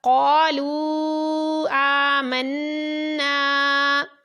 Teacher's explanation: اس میں واو مدہ کے بعد حمزہ دوسرے کلمے میں تو مد منفصل ہے، اس لیے اس کو کھینچ کر پڑھا